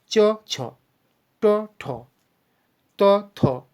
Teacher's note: হ্যাঁ, তাহলে প্রথম দুটোকে 1 আর 2 এ দুটো দেখো অতটা গাম্ভীর্যপূর্ণ উচ্চারণ নয়, যেমন চ ছ, ট ঠ, ত থ, এগুলোর ক্ষেত্রে আমরা কিন্তু অতটা গাম্ভীর্য ধ্বনি পাচ্ছি না, তাই এদের নাম অঘোষ বর্ণ।